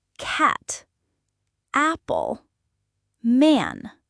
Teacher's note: This sound is often more open and frontal in American English compared to other dialects. Your jaw should drop a bit and your tongue should be relatively flat. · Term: short a sound